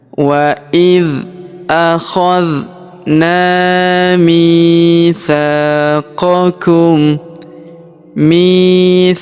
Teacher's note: Perhatikan huruf mi kita panjangkan 2 harokat karena terdapat ya sukun di depannya. Huruf sa kita panjangkan 2 harokat karena terdapat alif di depannya.